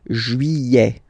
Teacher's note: Don't pronounce this final T, E-T here at the end.